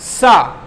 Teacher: तब इसका आवाज आया दंती सा का सा, जब वायु दांत से टकराई